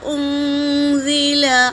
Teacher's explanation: حمزہ حرکت ہے، نون پر سکون ہے، اور نون ساکن کے بعد زا آیا ہے تو نون کا اخفا ہوگا